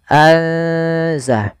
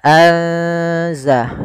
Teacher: Dan sedangkan ikhfa di antara keduanya, sehingga nunnya samarkan ke zai